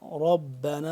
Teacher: را کو موٹا کر کے پڑھیں گے، با کے ساتھ مل رہا ہے، با مشدد ہے، با دو دفعہ پڑھنے ہو رہا ہے، ایک دفعہ را کے ساتھ، را اس کے ساتھ مل رہا ہے، دوسری دفعہ خود پڑھنے ہو رہا ہے، ٹھیک ہے۔